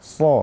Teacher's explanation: lidah dan di antara Gigi atas dan Gigi bawah jadi SH kita mengucapkan SH dengan cara menaikkan pangkal lidah ke atas